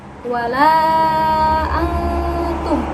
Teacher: Hai suara yang dihasilkan dari ikhfa aqrob mendekati bunyi entek tapi suara ditahan kira-kira dua ketukan agar tidak tertukar dengan izhar · Di antara ke-15 huruf ikhfa, huruf ta, to, dan dal adalah yang paling dekat makhrajnya karena berasal dari pangkal gigi seri atas. Suara yang dihasilkan dari ikhfa aqrab mendekati bunyi n, tetapi suara ditahan kira-kira 2 ketukan agar tidak tertukar dengan izhar yang hanya dibaca 1 ketukan. Contohnya seperti wala antum, yaitu nun mati bertemu dengan ta.